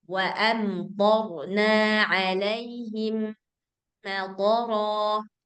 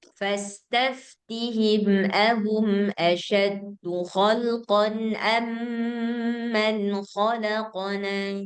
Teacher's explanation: Mim ketemu mim maka dibaca gunnah. Gunnah panjangnya dua harakat. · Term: idgham mutamatsilain